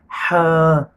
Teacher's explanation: ہا دو قسم کے ہوتے ہیں، ایک سانس والی جس کو ہم پڑھیں گے ہا، یہ حروف حلقی میں سے ہے جو حلق کے اوپر والے حصے سے ادا ہوتا ہے